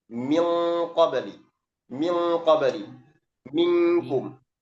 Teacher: Kalau kaf dan qaf ini dia bunyinya seperti eng.